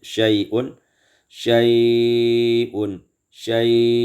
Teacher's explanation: Dengan baca tawassut dan isba'kan lin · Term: isba'ul lin